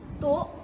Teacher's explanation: yaitu merupakan penghilangan fonem i. Penghilangan tersebut dikarenakan terlalu cepat berbicara.